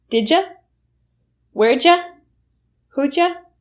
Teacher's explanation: how to speak English fast by reducing did and you to ja